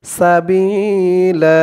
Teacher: এখানে এক আলিফ টান হবে কারণ দুই জবরে ওয়াকফ হয়েছে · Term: মধ্যে এওয়াস